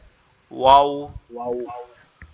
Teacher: বা এই ও ওয়াওটা হচ্ছে মিম দুই বা ঠোঁটটা গোলাকৃতি হবে। ওয়াওটা যখন উচ্চারণ হবে তখন দুই ঠোঁটটা গোলাকৃতি হবে